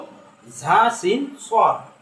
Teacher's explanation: আর 12 নম্বর মাখরাজ হলো জিহ্বার আগা নিচের দাঁতের পেট এবং আগার সাথে লাগিয়ে 3টি অক্ষর, তা হলো ঝা সিন সর।